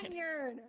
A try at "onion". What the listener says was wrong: There's no R in onion.